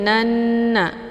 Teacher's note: nunnya yang pertama dileburkan ke dalam nun yang bertasydid dengan cara ditekan kemudian ditahan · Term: ghunnah musyaddadah